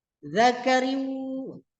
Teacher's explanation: Cara membacanya suara tanwin dimasukkan ke huruf waw. Cara membacanya ditahan serta dengung.